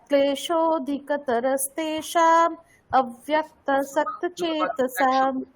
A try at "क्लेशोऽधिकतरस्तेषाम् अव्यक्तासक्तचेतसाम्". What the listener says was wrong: আলাদা করে দিচ্ছেন আপনি, একসঙ্গে বলুন।